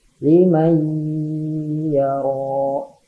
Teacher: Tulisannya liman yaro, tapi dibacanya limay yaro. Cara membacanya berdengung ditahan 2 harokat. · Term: idgham bigunnah